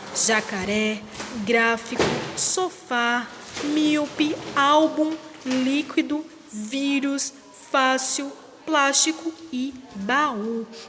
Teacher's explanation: a função do acento agudo que ele é usado para indicar uma pronúncia mais aberta naquela sílaba